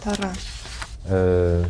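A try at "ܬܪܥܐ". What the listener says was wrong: Bon, le Ain, c'est pas encore tout à fait ça. Ain. Oui, alors faut pas oublier que c'est bien une voyelle ce Ain. C'est pas un A ordinaire. Il y a une consonne.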